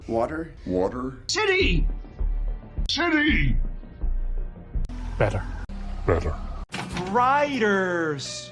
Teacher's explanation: يعني هما مش بيقولوا دال، لأ هما بيعملوا فلاب، لمسة كده واحدة سريعة فبتطلع الدي الخفيفة اللي احنا بنسمعها. فلما التي بتيجي مكان الفاول أو حرف الآر والضغط مش على المقطع الأول، صوتها بيتحول لدال خفيفة جدا